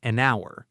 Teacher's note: It sounds more like an hour because the n sound connects directly to the hour sound